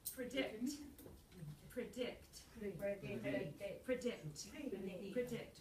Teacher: you're heading toward the second syllable so you don't put a lot of stress on the vowel on the first one